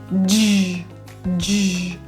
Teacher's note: The J sound, it's a voiced affricate. Just means, think of it like a D sound, D, with a J, J, J.